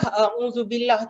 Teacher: Jadi kena pastikan lidah keluar pada zu.